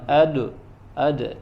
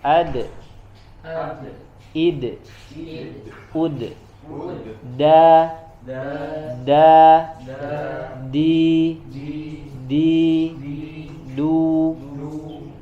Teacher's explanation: kalau huruf dal itu sifatnya tipis ya, maka qalqalahnya juga tipis, istifal ya.